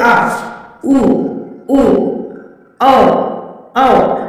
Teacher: मध्य स्वर आ, मध्य स्वर कितने होते हैं, मध्य स्वर एक होते हैं और अग्र स्वर चार होते हैं। पश्च स्वर जो बोलते वक्त जीभ का पीछे का हिस्सा होता है